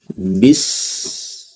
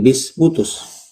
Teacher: Jadi al-hams mengalir napas dengan sempurna ya, dengan deras.